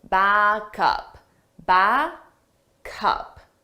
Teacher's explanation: we take the sound from back the last sound and we transfer it to the next sound up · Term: linking